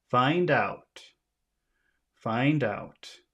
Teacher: The first one is usually longer, so you'd make find bigger than out.